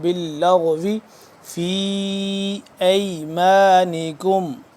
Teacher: فی لمبا کریں گے 2 سے 3 الف کے برابر